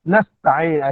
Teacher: Nasta'in sin yang mati bertemu dengan ta izhar mutlak juga, baca dengan jelas sin.